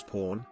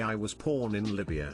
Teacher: was pronouncing all bees as hard peas